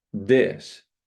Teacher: voice TH, this becomes a D.